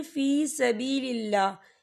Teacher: یہاں پر اللہ کا نام باریک پڑھا جائے گا کیونکہ اللہ کے نام سے پہلے زیر ہے